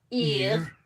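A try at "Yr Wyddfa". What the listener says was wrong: No, you don't roll it. Ear. Irwyddfa.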